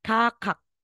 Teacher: wala na pong hangin sa final